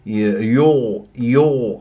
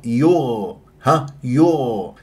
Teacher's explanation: هذه الياء مرققه والغين ساكنه مفخمه مرتبه رابعه من احرف الاستعلاء